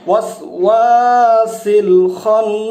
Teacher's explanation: ওয়াসওয়াসের এখানে টান দিতে হবে একটু, ওয়াসওয়াসিল খান্নাস। ওয়াজিব গুন্না, 2 হরকত পরিমাণ পর্যন্ত নাকের বাঁশি দিয়ে টান দিতে হবে।